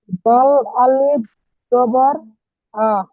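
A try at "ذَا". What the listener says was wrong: এখানে দাল আছে, আপনি দাল দেখতে পাচ্ছেন? দেখেন তো, জা লেখা, জাল আলিফ জাবার জা।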